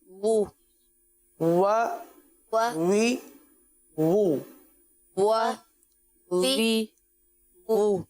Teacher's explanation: यह हर्फ दोनों होठों की गोलाई से अदा हो रहा है